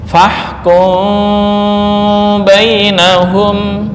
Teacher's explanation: Ini mengikhfakkan mim. Mengikhfakan mim berarti dibaca dengan samar bukan bibir tertutup 100% ya.